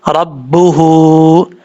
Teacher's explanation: اس مد کو مد منفصل کہتے ہیں۔ 2.5 سے 3 الف کے برابر آپ اس کو لمبا کریں گے۔